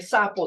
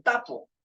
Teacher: etcétera entonces algunos ejemplos en vez de sapo dice tapo entonces sustituye una fricativa por una oclusiva